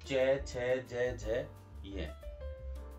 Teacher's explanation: स्पर्श संघर्षी, यानी प्राण वायु जो है वो स्पर्श भी करती है और संघर्ष के साथ बाहर निकलती है। उच्चारण में जो है वो हमें संघर्ष करना पड़ता है।